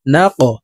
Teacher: নুন কফ জবর না ক, কফ কলকলার হরফ উপরের দিকে ধাবিত করে ধাক্কা দিয়ে উচ্চারণ করব।